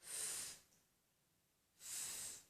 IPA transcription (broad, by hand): f